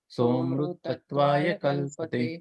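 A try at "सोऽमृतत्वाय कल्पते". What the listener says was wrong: Very good, बहुत सुंदर, बहुत सुंदर आप दोनों।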